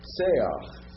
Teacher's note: the tsere is an A sound with a furtive patak